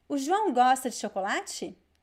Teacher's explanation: So the intonation goes up.